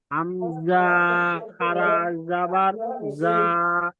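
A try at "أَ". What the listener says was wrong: আপনি টান দিলেন কেন হামজাটা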